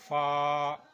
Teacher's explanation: یہ اوپر کے اگلے دونوں دانتوں کی نوک جب نیچے کے ہونٹ کے اندر والے حصے سے لگے گی تو یہ لفظ ادا ہوگا فا